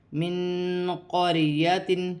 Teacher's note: را ساکن سے پہلے زبر ہے تو را موٹی پڑی جائے گی · نون ساکن کے بعد قاف آ رہی ہے، نون ساکن میں اخفا ہوگا